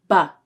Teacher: the b is voiced. The vocal cords vibrate when you say this sound, b. But the p is a voiceless sound.